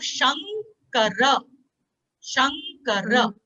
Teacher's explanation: the anuswara will convert itself into the nasal of the letter which is following it. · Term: nga